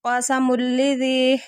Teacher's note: تنوین کے بعد لام آ رہا ہے، غنے کے بغیر ادغام ہو رہا ہے